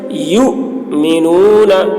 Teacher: حمزہ کے اوپر جب جزم ہوتا ہے تو اس کو تھوڑا جھٹکے کے ساتھ پڑھتے ہیں